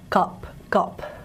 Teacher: the low mid back unrounded vowel